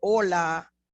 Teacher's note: I say hola, and I don't pronounce that H